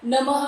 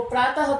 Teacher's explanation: संस्कृत में जैसे आप लोग नमः बोलते हो, प्रातः बोलते हो, वो विसर्ग होती है और वो विसर्ग का उच्चारण कंठ्य है